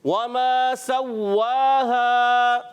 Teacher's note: وما سواها واو کی ادائیگی ہونٹوں کی گولائی سے، میم الف زبر ما عرف مدہ ایک الف کھینچ کر ادا کریں گے